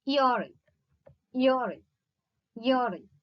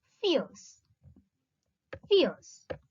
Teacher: A glide from a front unrounded vowel between close and half close to a central unrounded vowel between half close and half open.